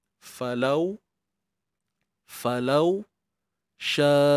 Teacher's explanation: Waw yang sukun sebelumnya baris atas kita akan baca dengan sifat lin.